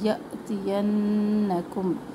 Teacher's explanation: فَإِمَّا میم مشدد ایک الف کے برابر الف مدہ یأتینکم یا جھٹکا اس لیے آ گیا کہ الف جو ہے ساکن ہے اس کے اوپر، یہ حمزہ بن گیا تو آواز میں جھٹکا ہوگا. یأتینکم نون مشدد ایک الف کے برابر.